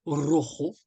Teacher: on peut retrouver ce r rouler à la manière des Espagnols c'est-à-dire quand ils veulent dire ro qui signifie le rouge voilà · on peut retrouver hein, ce R roulé à la manière des Espagnols